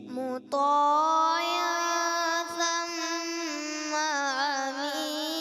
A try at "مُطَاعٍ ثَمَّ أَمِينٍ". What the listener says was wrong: ثم अमीन हमजा आइन की तरफ महसूस हुआ है, तो ये आप आइन को हमजा को आइन नहीं पढ़ना, हमजा क्लियर करना, ठीक है। मुत्ताइन ثم अमीन ثم أمين ثم अमीन।